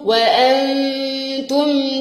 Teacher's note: وانتم التاء هتخفي النون